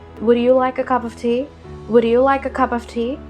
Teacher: Their voice is majorly flat. American English, as shown in media and business, is usually flat with a very even tonality.